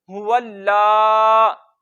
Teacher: لام پہ تھوڑا سا رکیں گے بھی، لام کو ایک الف جتنا لمبا بھی کریں گے